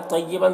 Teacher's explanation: तय्यबन, तो को पुर पढ़ना है, और बन की तनवीन में भी इख्फा हो रहा है, इसे जल्द इसे की आवाज़ को नाक में छुपा कर पढ़ेंगे।